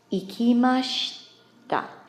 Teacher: Ikimashita. Notice the pronunciation of the she here is very, very fast, and you almost don't hear the I vowel on the end